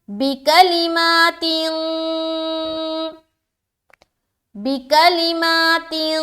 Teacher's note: نون کی آواز کو ناک میں چھپائیں گے، یہ کہلاتی ہے اخفا کرنا۔ تو یہاں پر ہم کریں گے اخفا، بکلمات، بکلمات۔